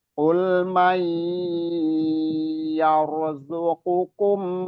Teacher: Mai itu ditahan, nun sukun bertemu dengan ya idgham bi gunnah.